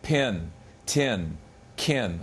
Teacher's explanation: English words like pin tin can all have aspiration